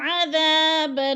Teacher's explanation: اعد لہم عذابا، عذاب پہ الف مدہ ہے، الف خالی سے پہلے دال کے اوپر زبر ہے تو الف مدہ کو ہم نے ایک الف دو حرکات کے برابر کھینچ کر پڑھنا ہے۔